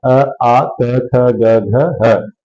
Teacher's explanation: अ आ क ख ग घ ह और विसर्ग इन सब का उच्चारण स्थान क्या है कंठ